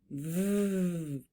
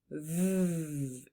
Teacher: Bottom lip, top teeth, steady voice. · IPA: /v/